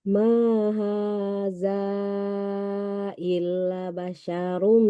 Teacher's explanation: Dua ini sama panjangnya. Ma dengan ha sama panjangnya